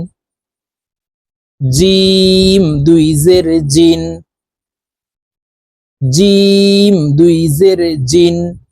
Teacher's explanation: জিম হরফের উচ্চারণ জিহ্বার মধ্যখান থেকে পড়তে হবে কারণ জিমের মাখরাজ জিহ্বার মধ্যখান থেকে হবে